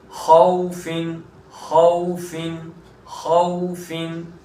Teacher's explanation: اس کے بعد خوفن خوفن خوفن، خا واو زبر خو، تو واو ساکن سے پہلے زبر آیا تو واولین، اور واولین ہے تو اس کو نرمی کے ساتھ بغیر کھینچے پڑیں گے، اور فا کے نیچے 2 زیر ہے، تنوین ہے۔